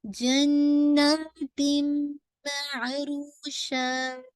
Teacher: sound of the तनवीन completely मर्ज हो गई है मीम के अंदर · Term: कामिल इदगाम